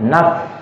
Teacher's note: ujung gigi yang atas itu ketemu dengan bagian dalam bibir yang bawah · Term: huruf fa